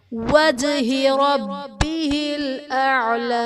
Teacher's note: وجہ میں جیم حرف قلقلہ ساکن ہے، یہاں پر قلقلہ خوب ظاہر ہوگا